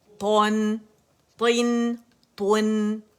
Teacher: اور نون باریک رہے گا، یاد رکھیے گا، موٹے لیٹرز کے ساتھ آئے گا لیکن باریک رہے گا